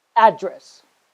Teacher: the place where you live is a noun so you stress on the first syllable